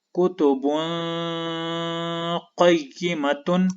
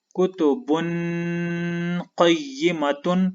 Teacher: اس اخفا میں نے ناک میں آواز کو چھپا کر غنہ کیا